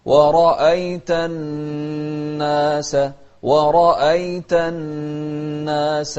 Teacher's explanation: الراء إذا كانت مفتوحة مفخمة